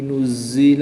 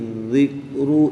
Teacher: زا بھی مشدد ہے اور ذال بھی مشدد ہے، ان دونوں کو پڑھتے وقت زا اور رال میں فرق کریں گے۔ زا میں سٹی کی آواز کی طرح سے آواز نکالیں گے اور رال کو بالکل سمپل پڑھیں گے۔